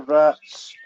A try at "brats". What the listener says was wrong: Yeah, your Scottish accent is making you mispronounce that. It's brats with a B. The accent's throwing them off. brats, people. It's brats. B-R-A-T-S. Brats.